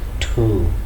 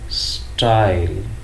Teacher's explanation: T is aspirated whereas in the word style T is unaspirated